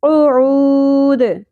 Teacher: قوف کو پر ادا کرنا ہے اور لہات یعنی نرم تالو سے. عین وسط حلق سے باریک آواز کے ساتھ، اور واو حرف مدہ ہے ایک الف کے برابر کھینچنا ہے. دال ساکن ہو جائے گا تو یہاں پہ مد عارض وقفی ہوگی.